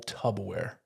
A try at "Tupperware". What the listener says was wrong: Say that again. Tupperware. You say tubaware.